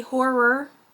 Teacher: And if you're wondering why I say horror that way, it's because with my particular accent, I have been told that apparently I cannot pronounce that word correctly. I tend to squish it into one syllable when it should be two, so it ends up sounding a little different.